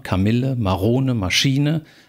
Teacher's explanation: die sind drei silbig und die mittlere Silbe ist betont